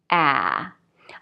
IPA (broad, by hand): ae